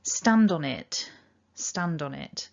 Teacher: we can also link stand on because we've got that d followed by a vowel and we can link the on to it as well because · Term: linking